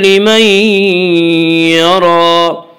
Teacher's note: لمن یرا میں ادغام بالغنہ ہوگا